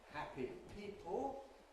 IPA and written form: ˈhæpi ˈpiːpl̩ (happy people)